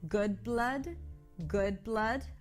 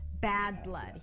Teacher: The good has that back open as in book, cook, and look. And the blood has a cup sound.